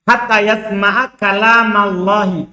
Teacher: Jadi Allahnya itu yang di tengahnya itu yang tebal, bukan yang pertama.